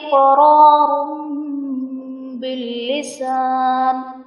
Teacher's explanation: تو ہم تنوین کو میم سے بدل کر اخفا کریں گے، یعنی غنہ کر کے پڑھیں گے